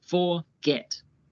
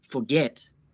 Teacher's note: The verb forget has two syllables, forget. Notice how the last syllable is stressed.